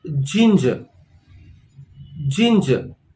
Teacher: the stress is on the first part of the word